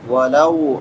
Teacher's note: واو ساکن ما قبل فتحہ ہے تو اس کو نرمی کے ساتھ ادا کریں گے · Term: واو لین